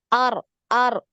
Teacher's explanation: Getarannya tetap ya, takrirnya tetap sekali · ketika sukun huruf ro ini mengalir ya, suaranya mengalir